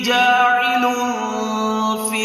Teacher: تنوین کے بعد حروف اخفاء میں سے فا آ رہا ہے، لہٰذا یہاں پر غنہ بھی کرنا ہے